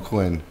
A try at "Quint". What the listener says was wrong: Quint. they're saying Quint, but you're not hearing the T.